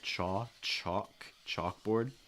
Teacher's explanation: Notice that the L is not really pronounced. It's more of an aw, like saw or law, chaw, chalk, chalkboard. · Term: Aw sound